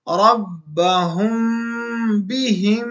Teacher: میم ساکن کے بعد با آ جائے تو یہاں پر غنہ ہو جاتا ہے